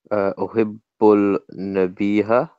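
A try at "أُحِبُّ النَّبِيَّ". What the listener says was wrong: So we shouldn't hear the lamb because noon is a sun letter. It's not ha. There's no ha on the end of the word.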